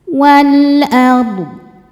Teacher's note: Karena alif lam menghadapi huruf qamariah yaitu hamzah. Ini alif dengan harakat fathah ini adalah hamzahnya. Maka lam dibaca dengan jelas. Walard ro dibaca tafkhim karena sebelumnya baris fathah maka rnya tebal. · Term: alif lam qamariah